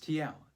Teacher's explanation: is a as in ah and the suffix is tl zen pronounced by touching the tip of your tongue to the back of your upper teeth like you're making a t sound while blowing air on the sides of your tongue